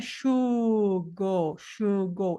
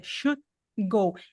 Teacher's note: esse D do should é uma Stop como vem uma uma consoante depois ele não falou esse D